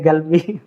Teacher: Dialek kayak di Yaman atau di kan berbeda dialeknya Mesir. Kadang karena kebiasaan dialek ngomong bicara sehari-hari seperti itu yang kof jadi G seperti G kalau dalam bahasa Indonesia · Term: Lahjah